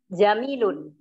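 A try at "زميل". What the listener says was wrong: Naam, zamilun. Pakai zai ya, zamilun.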